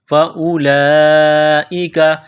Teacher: لمبی مد ہے 4 الف کے لمٹ میں کھینچنا ہے